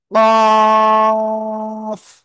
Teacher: এই যে এটা মনে করেন জিব্বার গোড়া, জিব্বার গোড়া থেকে একটু আগে বাড়াবো না, জিব্বার গোড়া তার বরাবর উপরে তালুর সাথে লাগাবো, লাগিয়ে একটু মোটা আওয়াজে উচ্চারণ করব।